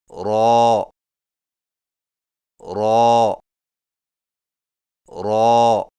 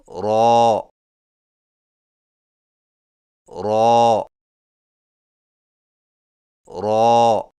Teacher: رو کی ادائیگی میں زبان کی نوک کی پشت کو اوپر والے دانتوں کے مسوڑوں سے لگا کر موٹی آواز میں پڑھیں، یعنی رو رو رو۔